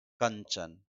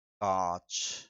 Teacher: कंचन को जब बोल रहे हैं तो पूरी की पूरी ध्वनि नासिका से निकल रही है। कांच को जब बोल रहे हैं तो ध्वनि नासिका और कंठ से दोनों से निकल रही है